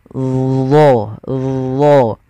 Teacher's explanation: dia mirip dengan zal, tapi pangkal lidahnya terangkat. Dan dia punya sifat namanya idbaq, melekat ke langit-langit lidah kita.